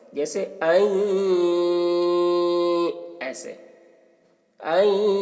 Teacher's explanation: اس کو ادغام ناقص کہتے ہیں، یعنی غنہ کے ساتھ پڑھا جاتا ہے۔ غنہ کے ساتھ میں نون کو یا سے ملا کر غنہ کے ساتھ میں پڑھتے ہیں، جیسے این، ایسے این، اس کو ادغام ناقص کہتے ہیں۔